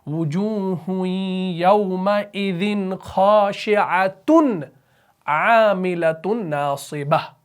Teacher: تا 2 پیش تن کو ظاہر کیا۔ کیوں؟ کیونکہ آگے عین آ رہا تھا حروف حلقی میں سے